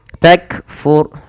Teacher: Takfur sama kaf sebagaimana ta membacanya ditahan dahulu bunyinya baru dialirkan nafasnya.